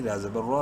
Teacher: را کو منہ بھر کے پڑھیں گے زبر کی وجہ سے